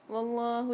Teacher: واللہ میں اللہ کے لام کو موٹا پڑھیں گے اور کھینچ کے پڑھیں گے